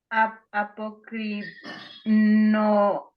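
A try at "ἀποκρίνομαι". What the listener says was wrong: sí, muy bien.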